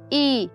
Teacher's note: As vogais, elas são marcadas pela diferença de posição que a língua coloca no trato vocal. Então, se eu falo I, a minha língua está mais alta